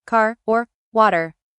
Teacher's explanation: In American English, we usually pronounce the R sound clearly even at the end of words like car or water. But in British English, especially in some areas, the R at the end of words is often softer or sometimes not pronounced.